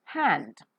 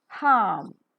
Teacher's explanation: the air that is coming out from the glottis, which is an opening between the two vocal cords in the voice box, comes out with audible friction. As the vocal cords are wide apart, it's a voiceless sound. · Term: voiceless glottal fricative